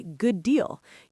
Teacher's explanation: You hold that D block in your throat for a split second longer. It's a subtle timing difference, but it makes you sound much more in control. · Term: twin consonants